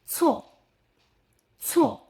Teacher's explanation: Same tongue position as z, but with a stronger puffy layer. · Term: c